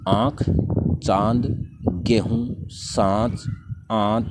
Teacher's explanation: कंठ और नासिका दोनों से बाहर निकलती है, उन्हें अनुनासिक वर्ण कहते हैं